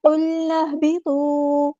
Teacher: نون کو ہم نے ہا کے ساتھ ملا دینا ہے، ہمزۃ الوصل ہمارا ڈراپ ہو جائے گا